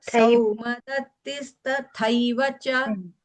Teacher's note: Ashwathama vikarnascha saumadatisthataiva cha. See, that tha is alpa prana. The next tha is mahaprana.